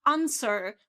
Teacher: the American variety would be answer with this r at the end